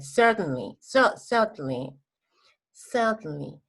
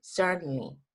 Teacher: En UK no pronuncian la R